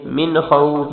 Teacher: من بغنہ نہیں کریں گے کیونکہ آخر میں خوا ہے. من نون کیا کریں، مین کے آخر میں خواہ، خوف کی خواہ، تو یہاں غنہ نہیں ہوگا.